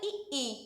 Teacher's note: ये हमारे तालू से बोला जाता है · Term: तालव्य